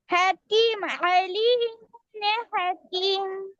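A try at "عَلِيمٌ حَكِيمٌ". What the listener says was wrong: তিন আলিফ টানেন না কেন? দেখে বলতে হবে ভালোভাবে। আলিমুন হাকিম।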